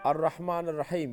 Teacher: The ra is going to be full mouth because it has a fatha on it.